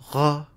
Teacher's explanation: Syllable initially, Danish's rhotic is a voiced uvular fricative r, and reduces to a in coda position. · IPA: [ʁ]